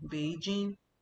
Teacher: So, it's a third tone for Bei, then jing means first tone.